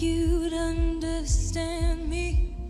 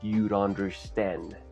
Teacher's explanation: Y ese sonido de D que se ve en la contracción es en medio de 2 vocales. Y ese sonido de D se pronuncia bastante similar a la R en español, como en la palabra caro